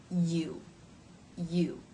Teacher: the lips start to form that tight circle of the vowel who even as you're making the Y consonant sound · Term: diphthong